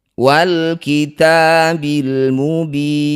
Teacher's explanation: Lam sukun baca dengan jelas, jangan tawallud atau diseret-seret bunyinya. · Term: izhar qamariyah